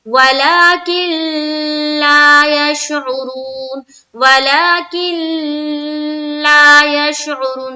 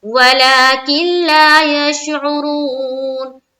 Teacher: ادغام تو کریں گے لیکن بغیر غنہ کے، یعنی کہ ٹھہراؤ بالکل نہیں ہوگا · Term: ادغام تام